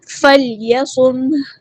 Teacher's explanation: ہاں کو ہم ساکن کر دیں گے وقف کرتے ہوئے، میم ساکن کو ہلانا، سم نہیں کرنا ہے اسے، اور نہ ہی میم کو ہلانا ہے، نہ ہی ہاں ساکن کو ہلانا ہے۔